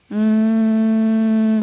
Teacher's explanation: suara dengungnya itu berasal dari rongga hidung